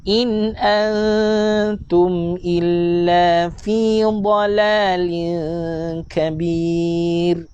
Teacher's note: nun mati berjumpa dengan huruf ta, ikhfa hakiki dengung NGG